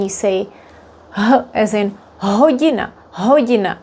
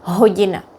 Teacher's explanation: pronouncing the letter H is similar to the English letter, except in Czech it's voiced. That means it's stronger than the English.